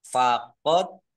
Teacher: Dal sukun bacaan kolkolah atau memantul, dibaca memantul dan ditampakkan pantulannya